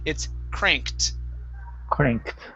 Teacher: the t is produced after unvoiced sounds like a k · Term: T sound